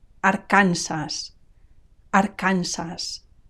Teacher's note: notice the stress it's on the second last syllable Aransas and notice also the final s i don't drop it